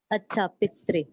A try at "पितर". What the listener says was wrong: पितरी से पितर बना, पितरी नहीं बोलिए, पितर पितर। हाँ, पीतर, जैसा आपने संधि तोड़ी थी, अनतिक्रमण किया था, वैसा पितर। तो यहाँ पे जो रा है, इसमें रा प्रकृति वाला है, माने अपने आप वाला रा है।